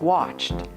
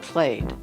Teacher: verbs ending in voiceless sounds use t, like watched, and voiced sounds use d, like played